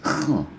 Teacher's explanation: terdengar seperti di pangkal tenggorokan